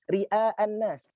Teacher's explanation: Ini huruf ra berharokat kasrah, maka dia punya sifat tarqiq.